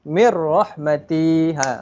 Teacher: Huruf nun dia dah kita tak dengar dah.